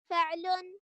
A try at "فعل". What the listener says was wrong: يعني هي تحسب أنها لما تعلي فهي كده نبرت على اللام، وهذا خطأ. النبر لا علاقة له بعلو الصوت وانخفاضه.